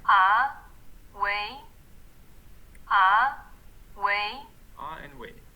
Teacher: yeah the pitch is rising